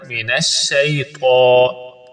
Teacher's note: شئی میں یا جو ہے وہ حروف لین میں سے، اس کو لمبا نہیں کرنا